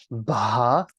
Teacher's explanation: Now we have an aspirated variant. Ba. So it's like a B with an H kind of combined with it. Same thing, you know, if you struggle with those aspirated sounds, please go watch the other videos in the alphabet where I do break down how to aspirate sounds in a more detailed fashion.